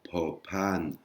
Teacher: avec un petit peu de l'air qui sort, avec un H inspiré